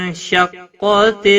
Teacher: نون ساکن کے بعد حروف اخفا کا شین آیا ہے، اخفا حقیقی ہوگا، گنہ کے ساتھ پڑھیں گے